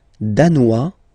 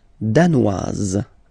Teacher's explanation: Danois, don't pronounce the final S. Danoise, here you pronounce it.